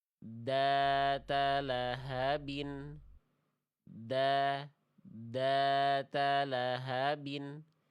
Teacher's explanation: Yang membedakan huruf dzal yang salah tadi itu nafasnya mampet. Nafasnya dia nggak mengalir, maaf, suaranya mampet. Suaranya nggak ngalir.